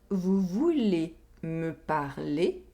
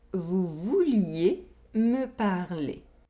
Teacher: one semi-vowel is added in the second sentence. There is a short [j] sound in the second sentence.